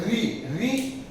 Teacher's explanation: देखिए तालु के मध्य भाग, जो तालु का कठोर भाग होता है, को स्पर्श करते हुए वायु बाहर निकलती है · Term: मूर्धा स्वर